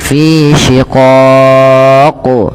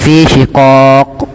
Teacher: Kita baca pada lafal qaf ketika kita waqaf, ini kan berarti qafnya menjadi qaf yang sukun. Maka ketika qaf sukun itu terhukumi dengan hukum bacaan namanya qalqalah. Maka ia perlu dipantulkan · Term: qalqalah kubra